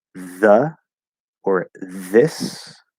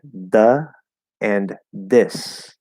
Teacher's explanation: americans will very very not all the time but very very commonly do a dental d or a dental t for the th sound